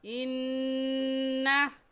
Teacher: इन्ना पर हम गुन्ना करेंगे क्योंकि नून मुशद्दद है और नून मुशद्दद पर हमेशा गुन्ना करते हैं।